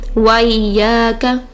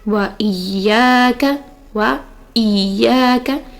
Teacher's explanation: وائی پڑھتے ہوئے وہ حمزہ کو سکپ کر جاتے ہیں, یعنی حمزہ کا مخرج صحیح سے ادا نہیں ہوتا جس کی وجہ سے حمزہ کا حق بھی پورا نہیں ہوتا.